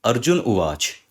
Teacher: अह के सामने क्योंकि एक स्वर आ रहा है तो विसर्ग का लोप हो जाएगा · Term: विसर्ग लोप संधि